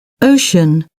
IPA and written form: ˈəʊʃən (ocean)